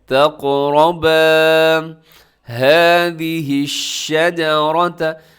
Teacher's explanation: وَلَا تَقْرَبَا هَذِهِ الشَّجَرَةَ، وَلَا لمبا کرنا ہے، الف مد ہے، تق قاف موٹا کیجیے گا، را کے اوپر حرکت ہے، را بھی موٹی پڑی جائے گی